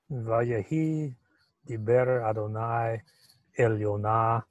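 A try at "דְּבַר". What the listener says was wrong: Okay, just the pronunciation of that word right there. Divar, right. It's not Diver Adonai, like the Lord spoke, but the word of the Lord. Yeah, so Divar Adonai.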